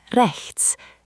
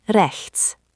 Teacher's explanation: Remember, it's like the ch in lach or the end of bach. It's a soft, guttural sound from the back of your throat, not a K sound. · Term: ch sound